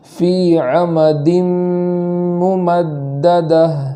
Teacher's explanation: اور عمد ممددہ تو عمدن کے نیچے دو زیر ہے, وہاں آگے والا حرف جو میم ہے دو زیر کے بعد جب میم ہوتا ہے, حرف میم ہوتا ہے تو وہاں ادغام کرتے ہیں. تو یہاں ادغام کریں گے اور ایک الف کے برابر تاخیر کریں گے. اس طریقے سے پڑھیں گے فی عمد ممددہ.